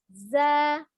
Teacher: Di mana ujung lidahnya ya berada hampir ya, ujung lidahnya hampir bertemu dengan gigi seri bagian bawah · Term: huruf zai